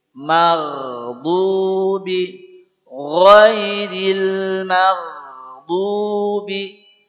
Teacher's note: huruf ghain ini punya sifat rokhawah, jadi ada aliran, tidak boleh maghdubi.